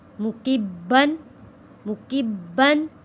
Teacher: یہاں پہ تنوین پہ غنہ ادا نہیں کریں گے کیونکہ اگلا لفظ عین ہے جو کہ حروف حلقی ہے